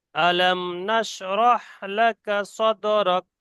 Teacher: এখানে মিম সাকিনটা বেশিরভাগ গুন্না হয়ে যায়, খেয়াল করবেন।